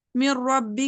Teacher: را نون کی آواز وہاں ٹوٹلی اسکپ ہو جاتی ہے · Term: ادغام تام